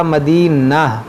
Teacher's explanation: میری سانس ٹوٹ گئی تو ہم نے کیا پڑھا مدینہ، اس گول تا کو ہا ساکنہ بنا دیا